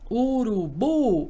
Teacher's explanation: observe que a sílaba mais forte aqui é a última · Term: oxítona